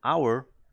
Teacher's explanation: pero Hour la H no se pronuncia